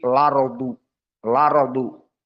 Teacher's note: hamzahnya akan dihilangkan maka harakat pada Hamzah ardu yang fathah dipindahkan kepada yang sebelumnya dari sukun yakni lam maka akan dibaca nanti laru laru maka ini dinamakan dengan naql